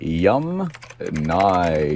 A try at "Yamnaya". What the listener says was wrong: Okay, so the Yamnaya people, not Yamnya.